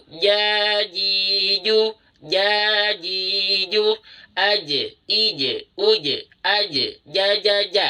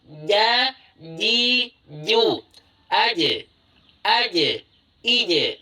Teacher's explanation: Bayangkan ini adalah bagian tengah lidah: ujung lidah, tengah lidah, belakang lidah. Sekarang, bagian tengah lidah kita diangkat ke langit-langit mulut. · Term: Jim